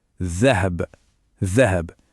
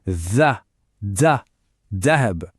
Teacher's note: On sent cette petite vibration du th sur la langue.